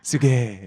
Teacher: Guys usually say すげー。 the goi gets contracted into げ